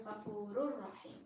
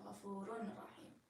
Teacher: the ending of the nun sakina or tanween is merged and connected into the following letter · Ghafurun, Rahim is what it originally is because Ra has a tanween on it, but because there's a Ra afterwards and Ra is a letter of idgham, you connect the Ghafur and the Rahim and you say Ghafurur Rahim instead of saying Ghafurun Rahim